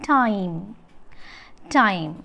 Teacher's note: The lips are unrounded throughout time. See, it is unrounded. · the glide of RP, received pronunciation diphthong I, begins at a point slightly behind the front open position. Behind the front open position and moves in the direction of the position associated with RP E.